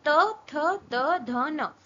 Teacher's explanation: अब dental, dental मतलब वो हमारी टीथ, टंग हमारे टीथ को टच करेगी।